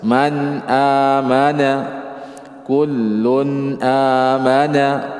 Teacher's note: Jadi jangan di gunnah, jangan ada suara yang keluarnya dari hidung, ya. Atau ditahan, jangan. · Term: izhar